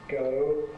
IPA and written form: gəʊ (Go)